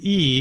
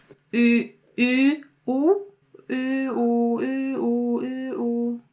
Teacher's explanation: On the oo, your tongue goes back a bit.